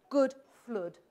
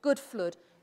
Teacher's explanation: somebody with a northern English accent will rhyme good and flood